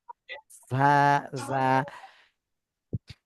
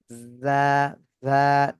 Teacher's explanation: জিহ্বার আগা সামনের নিচের দুই দাঁতের পেট এবং আগার সাথে লাগায়